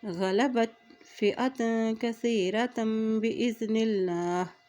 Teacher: اللہ کے نام سے پہلے زیر ہے تو اللہ کا نام یہاں پر باریک ادا کیا جائے گا